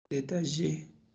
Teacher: En este caso es aproximante palatal, sonora.